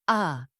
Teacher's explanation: This sound is more forward in the mouth, and the tongue rises slightly. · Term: short A sound